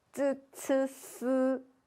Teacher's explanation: 쯔, 츠, 스로 혀 끝을 윗니의 뒷면에 터치하면서 발음을 합니다